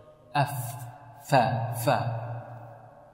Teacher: أطراف الثنايا العليا مع بطن الشفة السفلى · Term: مخرج الفاء